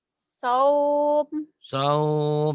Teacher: Jadi panjang kalau dihentikan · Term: madlin